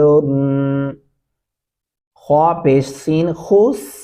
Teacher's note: خوا موٹا اور پر کر کے پڑھا جائے گا اور سین سیٹی کی سی آواز میں پڑھا جائے گا